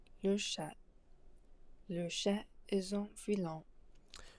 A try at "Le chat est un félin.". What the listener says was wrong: Okay, and I'm also kind of hearing filin instead of fait. I'm hearing i on that vowel, the first vowel of félin. I'm hearing filin, but we want félin. So perhaps if you are a native English speaker, right, you're thinking of the feline, right? But here we want félin.